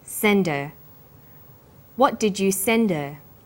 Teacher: send is the strong form and her is weak because her is not stressed we drop the initial hurt sound so it's pronounced sender what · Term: initial h sound